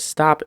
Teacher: Actually, the word stop is a stop. Notice that when you end the word stop, the entire sound gets cut off.